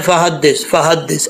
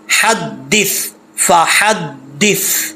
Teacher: سا میں سیٹی نہیں ہوگی، سا بغیر سیٹی کے پڑھا جاتا ہے. ٹھیک ہے، زا، سین، صاد، ان 3 حروف میں سیٹی ہوتی ہے، ان کو حروف صفیریہ بولتے ہیں، اور سا میں سیٹی نہیں ہوتی.